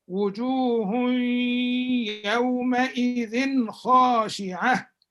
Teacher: it is pronounced very clear without ghunnah, and so the tanween is apparent and is not faint like this. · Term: izhar